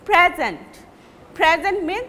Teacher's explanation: When it is noun, you will give prominence in the first syllable, then you will pronounce it loudly the first syllable.